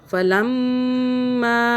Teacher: فلما، اب یہاں چھوٹی مدہ آ رہی ہے، میم کے اوپر تشدید ہے اور اس کے آگے جو ہے الف، اس کے اوپر چھوٹی مدہ ہے، ہم نے 3 الف کے برابر کھینچا. فلما، میم پہ ہم نے ہولڈ کیا اور 2 مرتبہ آواز بھی بنائی تشدید کی وجہ سے